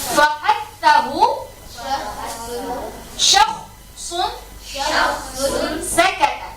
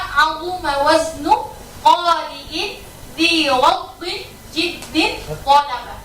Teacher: Terasa kan ngalir nafas? Beda sama azuma waznu qari'in dhi ghaddin jiddin qalaba. Tertahan nafas kita. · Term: hamsun